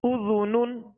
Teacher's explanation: زال کو نرمی کے ساتھ ادا کریں گے، اس میں سیٹی کی آواز پیدا نہ ہو